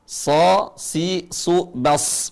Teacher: ujung lisan ketemu dengan ujung gigi seri bawah. Ujung lisan mengarah ke gigi seri bawah, ujungnya ketemu. Kemudian pangkal lisannya naik ke langit-langit. Enggak nempel tapi naik. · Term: huruf shad